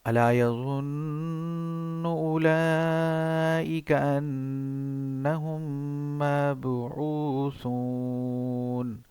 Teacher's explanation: غنہ کی آواز ہوتی ہے لیکن باریک آواز ہوتی ہے اور ٹھہر کے ہوتی ہے، تو یہ ہوتا ہے ادغام میم ساکن.